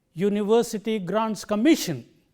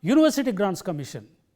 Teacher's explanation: So, the right way of pronouncing this phrase is university grants commission. Can you see how the word commission stands out from grants and university comparatively?